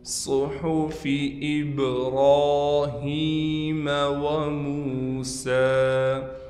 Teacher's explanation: ہا کے بعد یا حروف مدہ میں سے آ گیا لہٰذا یا کو بھی کھینچیں گے · وَمُوسَىٰ، یہاں بھی واو مدہ آ گیا، لہٰذا میم کو ایک الف کی مقدار کھینچ کر پڑھیں گے۔ سین پر کڑا زبر ہونے کی وجہ سے سین کو بھی ایک الف کی مقدار کھینچیں گے اور یہ یا نہیں پڑھی جائے گی